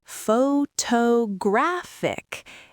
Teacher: The stress moved again. Now it is on the third syllable.